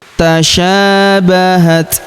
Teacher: Tasyabahat, huruf ta berharokat sukun kita berikan hembusan tipis